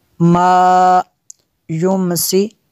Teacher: نون میں شدت ہے، یہاں پہ غنہ کیا